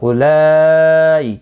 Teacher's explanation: اولائی مد متصل ہے، 4 الف کی مقدار کے برابر کھینچ کر پڑھیں گے